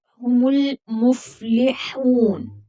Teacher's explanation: ہا پر واو مدہ ہے تو ہا کو 1 الف کی مقدار کے برابر کھینچ کر پڑھیں گے۔ وقف، علامت وقف ہے تو یہاں پر وقف کریں گے اور نون کو ساکن کر دیں گے۔